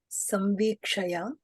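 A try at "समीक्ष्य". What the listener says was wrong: Samvikshya, not samvikshaya, samvikshya.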